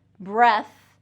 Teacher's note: breath, breath has the voiceless TH